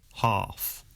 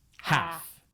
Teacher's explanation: Ah in UK English normally becomes an A sound in American English.